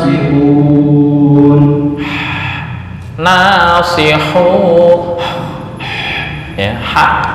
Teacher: makhrajnya di tengah tenggorokan atau wasatul